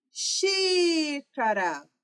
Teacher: O xi eu falei por mais tempo, então é a minha sílaba tônica.